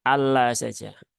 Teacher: ada lam bertasydid, menahannya jangan terlalu lama. Karena sebagian masih mempraktekkan Allah, nah, itu terlalu berlebihan ya, terlalu lama.